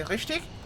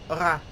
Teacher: You used to move a ra, front of the mouth sound, whereas it's the back of the mouth sound for the German R